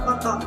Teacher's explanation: Contohnya itu seperti pada kata foto, posisi bibir bawahnya itu contohnya itu F, seperti pada kata foto, posisi bibir bawahnya itu menyentuh gigi atas, suaranya itu tidak bersuara.